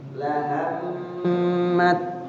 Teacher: Maka jadinya ta-nya itu enggak terbaca, diidghamkan yang dibaca to-nya. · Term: idgham mutamasilain